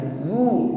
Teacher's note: mengucapkan huruf zai dengan sifat shafir dengan desisan